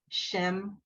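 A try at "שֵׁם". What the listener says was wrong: What's the vowel of the second word? You said Shem. Shame.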